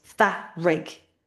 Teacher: we hear epenthesis, the addition of a vowel sound. So it sounds like two syllables.